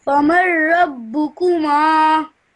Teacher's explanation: you straight away join the mim to the ra, then the ra to the ba. So famar rabbukuma.